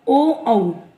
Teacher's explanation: ओ औ इनका उच्चारण स्थान कंठ और ओष्ठ अर्थात कंठ और होठ इनका उच्चारण स्थान माना जाता है।